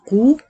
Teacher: طالما هقول قو يبقى لازم اضم شفايفي اي ضمه فيها ضم الشفتين